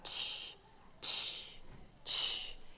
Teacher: see that the CH sound is really two sounds put together it's the T sound followed by the sh sound so that's what CH is it's first you make a t · followed by the sh sound so that's what CH is it's first you make a t real fast and then you say the sh sound